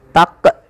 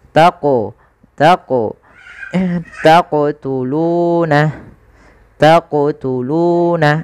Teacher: Qalqalah adalah bacaan memantul. Jadi ketika melafalkan huruf qaf itu ketika sukun dipantulkan. Nah, kesalahan yang terjadi dalam membaca qalqalah yaitu tidak memantulkan huruf qaf.